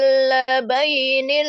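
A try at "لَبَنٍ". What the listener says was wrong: Labai, bukan labai, labanin. Labanin. Labanin.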